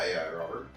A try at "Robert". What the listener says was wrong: Close. It starts with an R. Robert.